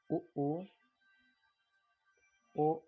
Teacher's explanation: जिसमें ओंठ वृत्ताकार घूमता है, गोल होता है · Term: वृत्तमुखी स्वर